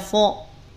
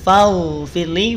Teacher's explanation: Jangan sampai saat mengucapkan huruf fa di lafad faghfirli, ya, faghfirli, fa-nya jadi tebal. Hati-hati, fa-nya tidak perlu dibaca tebal. Jangan ketarik karena ada ghain setelahnya.